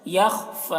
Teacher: خا کو پور پڑھنا ہے، خا میں قلقلہ نہیں کرنا ہے